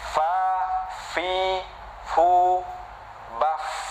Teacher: Yang pertama ya, ketika bibir kita ya, bibir yang bawah bagian dalam bertemu dengan gigi atas ya, ini gigi kita pertemukan dengan bibir bawah bagian dalam ya, maka akan keluar huruf fa, af, af ya.